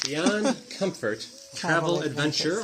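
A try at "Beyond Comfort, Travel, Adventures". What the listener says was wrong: Adventures. Adventures with an S.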